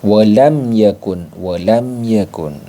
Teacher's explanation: yaitu mim sukunnya dibaca jelas jadi dibaca jelas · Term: izhar syafawi